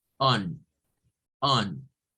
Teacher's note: comenzamos a como hacer una A, pero termina siendo una O